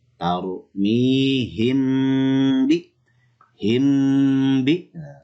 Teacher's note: Ya, mim sukun bertemu dengan ba. Mimnya harus ditahan.